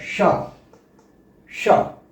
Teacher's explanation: तालू से जब जीव स्पर्श करती है तब इसका उच्चारण होता है श सीटी जैसी बजती है शलजम शल इसका उच्चारण तालू से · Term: तालब